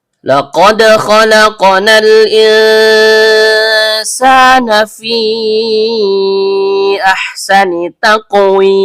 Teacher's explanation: Karena qof-nya sukun dan berada di tengah kata, maka hukum bacaannya qalqalah sugro. Bunyi pantulannya kecil.